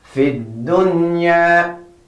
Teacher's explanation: We're not saying fil dunya, but we are joining with the da.